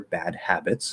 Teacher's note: supposed to be there it sounds nice and clear bad habits notice i'm not even stopping the d i'm doing a little weak d and then going into the h · you can always push out the h it's supposed to be there it sounds nice and clear